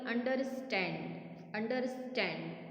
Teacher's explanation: शन, शन पे ज़्यादा स्ट्रेस है। 3 syllable words which stress on the third syllable.